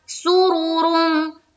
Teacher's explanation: सिर्फ रा के ऊपर क्या है, पेश है। तो बस ये ध्यान में रखना है कि रा को यहाँ पर हम पुर रखेंगे